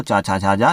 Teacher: तालु और जीभ के स्पर्श से बोले जाने वाले वर्ण जो है तालव्य वर्ण कहलाते हैं